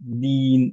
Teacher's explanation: দিন আমরা লম্বা করে পড়ছি কারণ হচ্ছে ইয়া সুকুনে তার আগে একটা কাসরা। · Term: মাদ